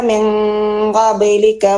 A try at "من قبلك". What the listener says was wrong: ഇവിടെ നിയമങ്ങളൊക്കെ പാലിച്ചിട്ടുണ്ട്, പക്ഷെ രണ്ടക്ഷരങ്ങളുടെ സിഫത്തുകളൊന്നും പാലിച്ചിട്ടില്ല. ഒന്ന് സായിന്റെ, രണ്ട് ഖാഫിന്റെ. മിൻ ഖബ്ലു മിൻ ഖബ്ലിക ഖബ്ലിക. ആ ഖാഫ് ഹെൽത്തി ആയിട്ട് വരുമ്പോഴേ അതിന്റെ സിഫത്ത് പൂർണ്ണമാകും. മിൻ ഖബ്ലിക എന്താ പോരാ, ഖബ്ലിക മിൻ ഖബ്ലിക.